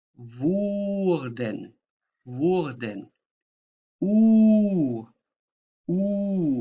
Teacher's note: So again, wurden, your tongue is at the back of your mouth.